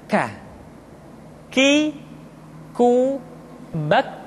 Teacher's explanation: Selanjutnya huruf K diucapkan dengan mengangkat pangkal lidah kita ke posisi di depan huruf Qaf. K diucapkan dengan mengalirkan nafas kita.